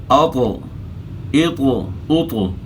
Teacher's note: त में मैंने त को हिला कर पढ़ा यानी इसको कलखला कहते हैं